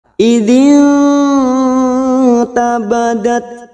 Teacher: Maka kita fokus pada nun sukun. Namanya bacaan ikhfa hakiki. Kita samarkan bunyi nun sukun 3 harokat.